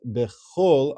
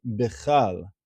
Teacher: that chaf has a o sound because it's a tenuah ketana